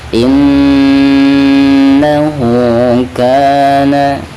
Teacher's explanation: Jadi domah terbalik, itu menandakan bahwa bacaan tersebut dihukumi mad silah qasirah ya. Untuk bacaan mad silah qasirah itu harus dipanjangkan 2 harokat ya · bacaan ka di sini dihukumi mad tabi'i, dibacanya 2 harokat ya